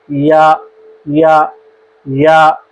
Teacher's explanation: زبان کا درمیان والا حصہ اوپر کے تالوں کی جانب اڑتا ہے، یعنی زبان جب اڑتی ہے تو حرف یا ادا ہو جاتا ہے۔ · زبان ٹچ نہیں کرنی، اٹھتی ضرور ہے، یعنی زبان حرکت کرتی ہے کہ اوپر کے تالوں کے ساتھ ٹچ ہو جائے، لیکن آپ نے اس کو تالوں کے ساتھ نہیں لگانا۔ زبان کا درمیان والا حصہ صرف اوپر کی جانب زبان کو اٹھانا ہے اور حرف یا ادا ہو جائے گا۔